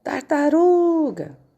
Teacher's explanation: A palavra tartaruga é paroxítona, que é a sílaba mais forte, é o ru